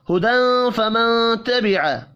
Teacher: تنوین کے بعد فا ہے، اخفاء حقیقی ہوگا، نون ساکن کے بعد تا ہے، یہاں پر بھی اخفاء حقیقی ہوگا۔